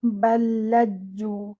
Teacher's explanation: you will join your ba with this lam mushaddad, and then this lam mushaddad will join with this jim mushaddad. So it should be balladju.